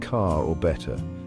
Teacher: the r sound often takes a holiday in British English